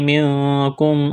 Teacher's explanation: نون ساکن کے بعد کاف ہے، یہاں پر اخفا کریں گے، آواز ناک میں چھپائیں گے